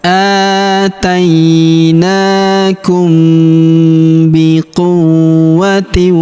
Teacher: Perhatikan huruf wau berharakat tasydid. Maka kita tahan dan kita tekan. · Kemudian huruf mim sukun bertemu huruf bi. Maka mim sukunnya melebur ke huruf B. Kita baca dengung dan samar. Dengungnya kita tahan dua sampai harakat ya.